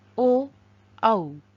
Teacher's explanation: कंठ ओष्ठ ओ, औ इनके होते हैं और इनकी संज्ञा कंठोष्ठ्य है